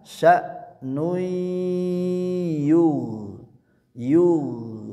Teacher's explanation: Tanwinnya diileburkan ke huruf ya. Dengungnya ditahan.